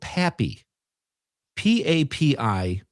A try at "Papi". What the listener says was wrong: Poppy. It's not Pappy. It's Poppy. It's Poppy.